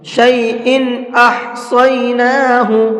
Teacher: تنوین کے بعد میں اگر حمزہ آ جاتا ہے تو وہاں پر اظہار کرتے ہیں، غنہ اخفا کچھ بھی نہیں کرتے ہیں، صاف صاف پڑھیں گے اب یہاں پر شیئن احصیناہ اس طرح سے، اور احصیناہ کے اندر صاد کو پر کر کے پڑھیں گے.